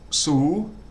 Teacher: sosa is a high class consonant, and the first tone mark, so that's going to have a low tone